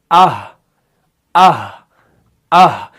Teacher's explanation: जहां पर आप आखिर पे रुक रहे हैं वहां पर हा की अदायगी है, यानी हलक के निचले वाले हिस्से से जो है हा अदा हो रहा है। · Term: अक्साए हलक